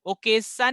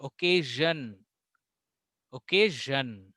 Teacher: जो जो स का साउंड है ना, वो ज का साउंड होना चाहिए जब आप इंग्लिश में बात करो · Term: ZH साउंड